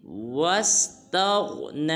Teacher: واو کے بعد جو الف ہے اس کو ہرگز نہیں پڑھنا، بلکہ واو کو سین ساکن کے ساتھ ملائیں گے اور غین کو پر ادا کریں گے